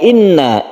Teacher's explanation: Inna ini adalah tasydid nun, gunnah musyaddadah, dan ini adalah berdengung. Guna artinya dengung, kita tahan cara membacanya.